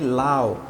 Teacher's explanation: দেখো এই যে স্বর অর পরে উটা দিছি, উ কিন্তু আমরা পূর্ণাঙ্গ উচ্চারণ করি নাই, উ আমরা হালকা উচ্চারণ করেছি। হর্স দিয়ে বোঝা যে এই জায়গায় এসে ব্রেক ধরেছে, এটা পূর্ণাঙ্গ উচ্চারণ হয় না। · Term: অর্ধ স্বরধ্বনি